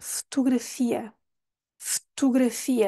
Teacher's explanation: o primeiro o nós nem pronunciamos